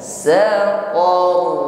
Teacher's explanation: Namun karena di sini huruf ro sebelumnya ada harokat fathah, yaitu o, se-or, maka jatuhnya huruf ro di sini mufakham atau tafkhim. Getarannya harus tebal.